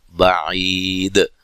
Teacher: باعی عی یا مدہ ہے، وقف کی صورت میں مد کر سکتے ہیں، اور دال پہ قلقلہ کرنا ہے، وقف کی صورت میں خوب واضح کرنا ہے